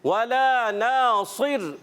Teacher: پیارے بچوں کھڑی حرکات یعنی حرف مدہ جو ہے ایک الف کھینچ کر ادا کریں گے, لام الف زبر لا اور نون الف زبر نا, ان کو ایک ایک الف ضرور کھینچنا ہے · صاد ایکسٹرا موٹے حروف میں سے اس کو ہم ایکسٹرا موٹا کریں گے. را وف کی صورت میں ساکن ہو جائے گا, اس سے پہلے زیر آنے کی وجہ سے یہ را باریک پڑھیں گے